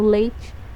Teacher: ele é um ditongo decrescente, quando a minha vogal ela aparece antes da minha semivogal